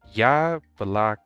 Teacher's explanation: it is only because these letters o are not stressed that is why they are pronounced as letters a we have stressed on the first vowel here y bla now